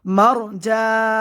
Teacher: মারজান, জান এখানে মধ্যারজি, মধ্যের হরফের পরে ওয়াকফ হয়েছে, মধ্যারজি 3 আলিফ পরিমাণ টান হবে।